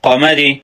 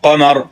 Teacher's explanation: زیر کی صورت میں باریک اور سکون کی صورت میں پر پڑا جاتا ہے